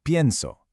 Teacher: The stress is on the front, on the stem. And because that syllable is stressed, it changes.